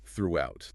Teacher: That TH sound is a killer. Tongue between the teeth